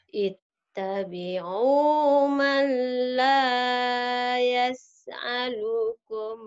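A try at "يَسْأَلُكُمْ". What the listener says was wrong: Hamzah jangan ain. Yas'alukum jangan yas. A biasa ari ari a biasa.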